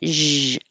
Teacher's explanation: it's the same as sh but with voicing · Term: z sound